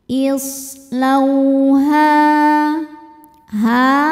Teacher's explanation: Sebab ada alif sebelumnya berharakat fathah. Cara bacanya dipanjangkan h-nya dua harakat. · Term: mad thobi'i zohiri